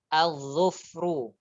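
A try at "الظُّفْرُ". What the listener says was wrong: Zufru, benar.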